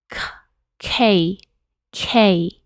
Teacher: Por ejemplo, en el inglés ellos dicen K, K. Entonces esta K tiene más aire que en el español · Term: letras aspiradas